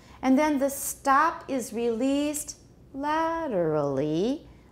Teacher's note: la is the tonic we have to spread out the rest of the continuation rise over the remaining syllables